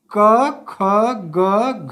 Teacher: यह सारे वर्ण जो हैं ये कंठ से बोले जाते हैं इसीलिए इनका उच्चारण स्थान कंठ है ठीक के आप बोल के